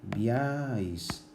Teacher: el énfasis ha caído en la vocal fuerte la vocal abierta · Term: triptongo